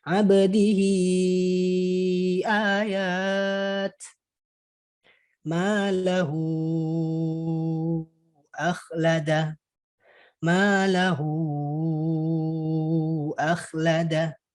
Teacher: Jadi mad ini adalah mad silah yang tadi ya, mad silah yang sebelumnya, kondisi dari mad silah yang sebelumnya yaitu ha domir. Ketika mad ha domir tadi huruf setelahnya adalah hamzah, maka dia dibaca panjang 4 atau 5 harokat. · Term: mad silah kubro